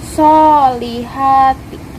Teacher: Pertama, alif lam syamsiyah karena huruf lam bertemu syad. Cara bacanya idgham dan huruf lam dihilangkan langsung masuk ke syad. Kedua, mad tabi'i karena huruf shad berharokat fathah bertemu alif. · mad tabi'i karena huruf ha berharokat fathah bertemu alif. Cara bacanya dipanjangkan 2 harokat.